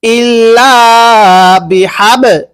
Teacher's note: বায়ে যদি সাকিন হয় কলকলা করে পড়তে হয়। ইল্লা বিহাব, লাম মিম জের লিম, গুন্নাহ করতে হবে।